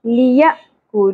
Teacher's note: ہوگا یا حمزہ کے اوپر جزم جھٹکے سے پڑھیں گے لیکو کف باریک ہوگا اور واؤ ساکن حرف مدہ ایک الف کے برابر کھینچنا ہے